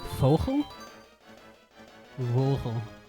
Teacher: And then we got vogel where it's pronounced like an f so it's like fogle.